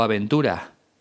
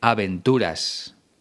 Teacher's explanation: aspirada se convierte en una especie de h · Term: s aspirada